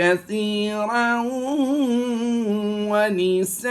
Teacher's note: इख्फा का कायदा करते हुए हम यहाँ पर गुना ज़मानी की आवाज़ देंगे।